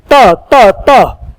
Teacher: वो आपका दंत से होता है